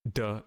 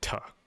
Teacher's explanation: between a d sound and a t sound in english right one you have your vocal cords engaged the other they're not and air flows more freely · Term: voiced